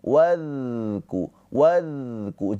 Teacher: Maka ketika pengucapan huruf dza sukun dialirkan hurufnya. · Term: sifat rakhah